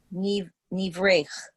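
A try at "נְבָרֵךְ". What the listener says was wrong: It's not E, and it's Niv. So there's a vowel. Nivarech.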